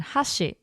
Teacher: if you said hashi, where it starts up and it goes down, hashi means chopsticks.